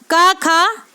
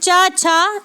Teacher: हमारे अघोष हैं। यानी इनके उच्चारण में हमारे मुख से कंपन उत्पन्न नहीं होता, ये केवल श्वास के यानी सांस के माध्यम से ही उच्चारित होते हैं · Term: अघोष वर्ण